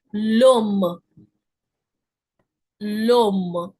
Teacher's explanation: Ash is silent, so let's assume it doesn't exist. So I'm just connecting the sound of my article le with o. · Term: liaisons